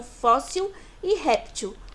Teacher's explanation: paroxítona é porque a penúltima sílaba que é mais forte só e ré são as sílabas mais fortes em fóssil e réptil